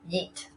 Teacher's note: they took the [j] sound in “yes” and the [it] sounds in “neat” and created the pronunciation [jit]